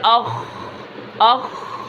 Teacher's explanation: آواز کے اندر کیا ہے، نرمی ہے اور آواز جاری بھی ہے · اب اخ خا کی آواز جاری ہے